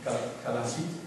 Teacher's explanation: she pronounced like a lateral fricative or something